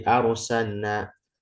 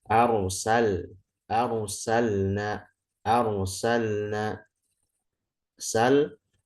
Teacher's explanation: Lam sama nun makrojnya dekat, sama seperti ra ya, lam nun ra. Nah, maka di sini jangan sampai lidah kita itu malah ngarah ke nun daripada ke lam.